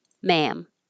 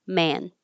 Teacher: because they both end with a nasal m or n. It's really hard to tell.